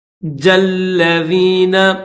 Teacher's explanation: جیم کو لام کے ساتھ ملائیں گے کیونکہ لام کے اوپر بھی تشدید ہے